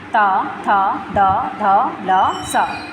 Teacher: दंते व्यंजन जिनका उच्चारण ऊपर के दांतों के जीभ के लगने से होता है